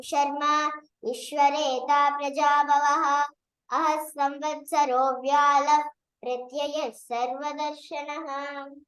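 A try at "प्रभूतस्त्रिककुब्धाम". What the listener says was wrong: Only that 7th sloka, it is Prabhuta. Okay? What is that? Second line? Prabhuta, not Tribhuta.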